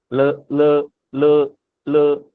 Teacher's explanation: तो हम ना दांत से थोड़ा पीछे को हल्का सा जीभ ऊपर को लगाएंगे।